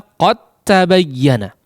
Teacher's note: Huruf dalnya sudah tidak dianggap karena sudah melebur kepada huruf ta, ya, sudah masuk secara sempurna kepada huruf ta. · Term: idgham kamil